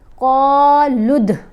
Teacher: لام کو ہم نے دال کے ساتھ ملانا ہے تو دال کے اوپر کلکلا کرنا ہے، کیونکہ دال حروف کلکلا میں شامل ہے.